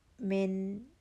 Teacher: من نون ساکن 1 count, natural غنہ ہوگا نون ساکن کا